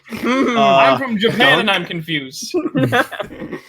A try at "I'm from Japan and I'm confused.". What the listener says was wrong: You put the emphasis on the wrong word, sir.